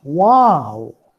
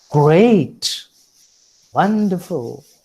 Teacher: So the exclamative sentences make use of the falling tone.